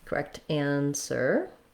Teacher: If the next word starts with a vowel, for example, the correct answer, then my T is going to change to more of a D sound